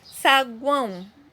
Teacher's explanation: Saguão, o ão, eu falo tudo junto, então não tem nada de hiato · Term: tritongo